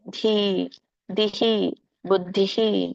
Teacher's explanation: ಧಕ್ಕೆ ಈ ಅನ್ನುವಂಥ ಒಂದು ಸ್ವರ ಕೂಡಿರೋದ್ರಿಂದ ವಿಸರ್ಗ ಕೂಡ ಈ ಆಗತ್ತೆ.